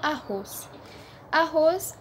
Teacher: arroz é dividido por arcos porque duas duas consoantes se separam então o ros é a sílaba mais forte ou seja é uma palavra oxítona